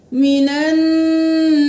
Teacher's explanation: من النساء نون پر تشدید ہے, غنہ کریں گے. یہاں پر ایک الف کے برابر دیر لگے گی, یہاں پر 5 الف کے برابر دیر لگائیں گے.